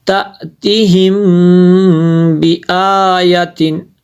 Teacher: تی کو لمبا نہیں کرنا ہے